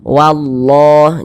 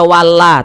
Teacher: Allah sebelumnya ada baris satu di atas huruf ada harakat fathah maka lafaz Allah kita baca tafkhim kita baca tebal